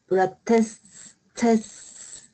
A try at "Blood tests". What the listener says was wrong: Yeah, you don't have to make it too long. Listen carefully. Test.